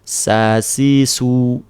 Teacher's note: Kalau sin cukup senyum sa si su tidak butuh effort yang lebih karena dia huruf yang ring tidak berat tidak punya sifat tebal.